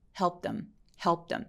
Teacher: 자, 그러면 마지막에 쟤는 어떻게 읽을까요? helped의 트 소리가 P와 TH 사이에 껴있죠. 그래서 help them 이라고 트 소리를 아예 없애버려요.